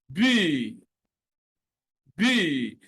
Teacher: the upper and the lower lips have to come together and form a complete obstruction